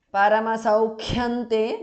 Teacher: Paramasaukyante because of sandhi, anuswara changes to nu there